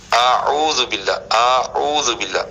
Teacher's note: پہلے الف کو پڑھنا ہے جو حمزہ کی آواز نکالے گا، اس کے بعد عین ہے